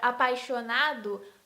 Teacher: na palavra apaixonado, o na é a sílaba mais forte, é a sílaba tônica, e as outras sílabas são sílabas átonas